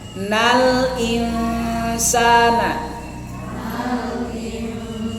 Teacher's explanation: ketika ada Nun bertemu Sin ikhfa itu ditahan tahan panjang ya jangan terburu-buru